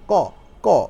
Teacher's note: কটা দেখেন একদম অল্প হাওয়া ছাড়তেছেন, ক মানে একটু হাওয়া বেশি একটা বের হচ্ছে না, আপনার মুখ দিয়ে বাতাস বের হচ্ছে না।